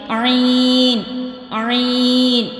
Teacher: تو جو وسطی خلق ہے وہاں سے ادا ہوگا عین اور ہا، عین یعنی خلق کے درمیانی حصے سے ہم ادا کریں گے